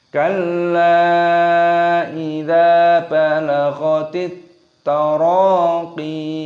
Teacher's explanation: Taraqi, panjangkan qafnya, ada ya sukun di sini ketika berhenti waqaf maka dipanjangkan qafnya karena ya-nya disukun menjadi panjang mad tabi'i